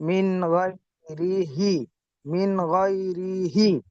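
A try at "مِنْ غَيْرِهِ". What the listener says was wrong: মিন গয়, মিন গয় রিহি, হিকে টান দেবেন তো খারাজে।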